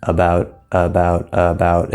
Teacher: work a bit differently so if you speak Japanese for example a Japanese speaker and in fact many Asian speakers learning English they tend to be very flat or monotone one mono tone so it's very flat and so they'll say